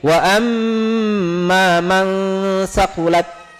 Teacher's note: Seluruh mim musyaddada itu harus didengungkan